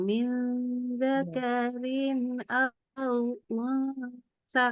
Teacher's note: dengungnya itu mendekati n ya, bukan ke eng ya.